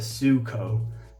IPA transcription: su:koʊ